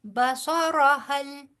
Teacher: اور اسی طرح فرجع البصر هل بصر هل بصرا نہیں کہنا، بصرا کریں گے نا تو الف مدہ آ جائے گا